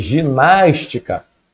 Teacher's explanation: ginástica, perceba que é a antepenúltima. Isso aqui é uma proparoxítona